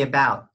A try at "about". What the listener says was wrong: Don't forget your held T sound.